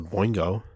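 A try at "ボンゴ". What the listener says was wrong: Bongo is no I. It's Bongo.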